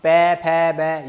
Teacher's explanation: पै फै को उच्चारण स्थान, फै ओठों से बोला, पै फै बै ये सारे ओठों से बोले जाते हैं